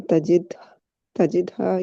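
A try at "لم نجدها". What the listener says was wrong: Najidha. Najidha. you said tha or the noon? So it will be lam najidha. Lam, yeah, so it's a noon.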